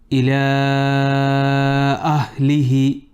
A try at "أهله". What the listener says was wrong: Don't say you're making the alif heavy. You're saying no.